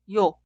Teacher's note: Vocal yo se clasifica como vocal simple, pero fonéticamente es una vocal doble. Por eso el sonido inicial es I e instantáneamente termina con O. Cuidado, suena como un solo sonido, no dos sonidos separados y O.